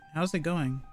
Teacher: You barely hear it, but there is a slight g at the end. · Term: devoiced